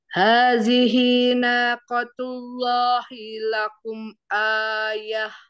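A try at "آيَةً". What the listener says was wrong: Ini masih panjang, Bun. Jangan ai, jangan ai. Ah, sempurnain dulu a-nya. Ayatan.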